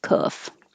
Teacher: the tongue is very low and pulled back